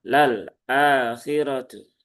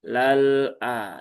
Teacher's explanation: Berubah dari yang awalnya tawas berubah menjadi syiddah sehingga terbaca lal akhiratu. · Alirkan separuh karena tawas itu kan dia di antara ya sifat di antara tertahan dan mengalir ya.